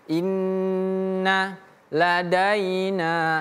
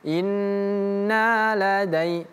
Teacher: Nah, setelah fathah kalau bertemu dengan ya, daina, inna ladaina, seperti itu. Nunnya tidak perlu dipanjangkan, yang ini inna tidak perlu dipanjangkan, jangan inna ladai, tapi inna ladaina, seperti itu.